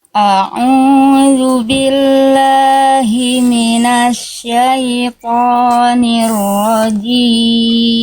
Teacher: Hamzah itu huruf yang tipis, jangan o, tapi a